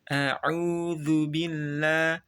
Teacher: a hamzah tenggorokan bagian bawah, au tenggorokan bagian tengah